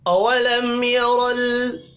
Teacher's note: मीम साकिन के बाद या है, इजहार शफ़ी होगा, गुन्ना नहीं होगा।